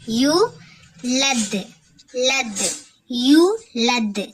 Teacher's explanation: இது வந்து வாவ் மத்தா ஒரு அலிஃப் நம்ம நீட்டி ஓதணும்